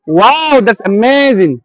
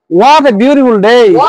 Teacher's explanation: when the voice rises and then falls